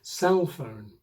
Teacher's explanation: 'cell phone' is a compound, with the main stress on the first word, CELL phone.